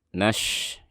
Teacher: dari nun langsung disambung ke shin